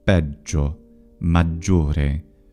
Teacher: Note that it's geminated in Italian, peggio, maggiore, with a double G sound.